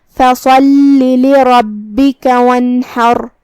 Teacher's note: یہاں حرف الحاء ہے، حاء کی ادائیگی حلق کے درمیان والے حصے سے ہے. آخر میں را کا حکم ہے تفخیم کیونکہ اس پہ جزم ہے لیکن اس سے پہلے والے حرف پہ مطلب حاء پہ زبر ہے تو ہم را کو بھاری آواز میں پڑھیں گے